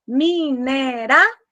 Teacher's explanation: Decrescente, porque primeiro começou pelo som mais forte, a vogal, depois a semivogal. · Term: ditongo decrescente nasal